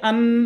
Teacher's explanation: এটা মুখ দিয়ে উচ্চারণটা হচ্ছে না, এটা নাক দিয়ে উচ্চারণ হচ্ছে। গুন্না মানে হচ্ছে মুখ দিয়ে না পড়ে নাক দিয়ে গুনগুনিয়ে পড়তে হয়, এটাকেই গুন্না বলা হয়।